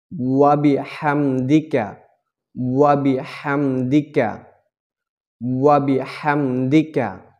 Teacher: হা হচ্ছে গিয়া হলকের মাঝখান দিয়ে একটু চাপ দিয়ে চিকন করে